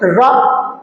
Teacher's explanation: जिन वर्णों का उच्चारण करते समय हमारी जबान लुढ़क जाती है, यानी कि ऊपर की ओर कुछ मुड़ जाती है। अब जैसे बोलिए रा, रा है, जैसे आप बोलेंगे देखिए जबान थोड़ा ऊपर की तरफ मुड़ जाती है। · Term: लुंठित वर्ण